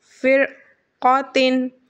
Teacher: آگے سبق فا را زیر فر، قاف زبر قا، پھر قا، تا دو زیر تین، پھر قادتن، فرقاتن، را ساکین کے بعد قاف حرف مستعلیہ کا ہے، را کو پر یعنی موٹا پڑھیں گے